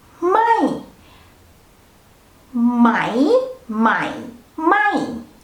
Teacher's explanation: It's not just low tone but falling tone.